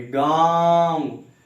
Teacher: इसका उच्चारण मुख से अधिक नाक से कम। आप खुद से बोल के देखिए। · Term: अनुनासिक